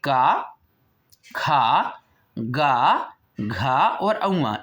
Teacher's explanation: इनको जब हम बोल रहे हैं तो देखिए हमारी जीभ कहाँ को स्पर्श कर रही है, हमारी जीभ जो है वो कंठ को स्पर्श करती है · पूरा ही का वर्ग हमारा जो है वो कंठ को छू करके निकलता है